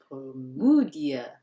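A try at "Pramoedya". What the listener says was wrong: And it's not even that. It's ja. It's Promuja. Because they spell the ja with a dy. That one's a little bit, more sensible. But OE, using that to spell oo, do you see what's wrong here?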